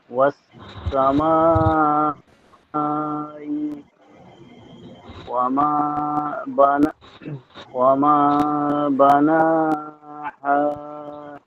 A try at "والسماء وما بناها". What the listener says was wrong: শেষের হা মনে একটু চাপ হয়ে গেছিল, বানাহা আর হচ্ছে ওয়াসসামা টান কম হয়ে গেছিল, যতটুকু হয়েছে সব মোটামুটি চলে, কিন্তু আর একটু টান হবে পড়ার সৌন্দর্যের জন্য।